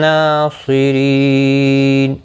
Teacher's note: ری یا مدہ ہے، ایک الف کی مقدار کے برابر کھینچ کر پڑھیں گے، را زیر کی وجہ سے باریک پڑا جائے گا. اور وقف کی صورت میں نون ساکن پڑا جائے گا، وقف بالاسکان ہوگا، مد العارض وقفی ہوگا. 3 سے 5 الف کی مقدار کے برابر کھینچ کر اور وقف کریں گے · صاد مستعلیہ ہے، پر پڑا جائے گا